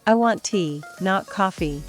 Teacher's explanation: rising and falling for contrast